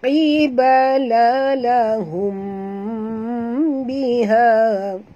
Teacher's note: La du harakat, qibala lahum. Huruf qaf walaupun baris bawah kena jaga makhrajnya tebal kerana huruf qaf tak sama dengan huruf kaf ya.